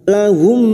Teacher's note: memasukkan bunyi mim sukun kepada Mim berikutnya disertai mendengung selama tiga harakat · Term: Idgham Mimi